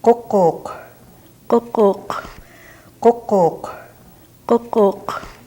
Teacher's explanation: You'll notice that the first three were familiar sounds, but the Q is something that you're going to have to work on. The Q is made similar to the K, but the root of the tongue is brought up by the uvula. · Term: uvular stop